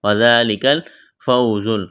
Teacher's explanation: وذالک الفوز، واو ساکن سے پہلے زبر ہے، واو لین ہے، بغیر کھینچ کے پڑھیں گے، زا میں سیٹی کی آواز پیدا کریں گے۔ عظیم، دعا کو موٹا کرنا ہے، یا ساکن سے پہلے زیر ہے، یا مدہ ہے، ایک الف کے برابر کھینچنا ہے، وقف کریں گے، میم کو ساکن کریں گے۔